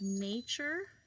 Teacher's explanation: nature is kind of tricky because it has that T that sounds like a ch sound